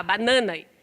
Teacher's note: O N por contiguidade, banana, por exemplo, o N por contiguidade. A segunda sílaba da palavra nasaliza o A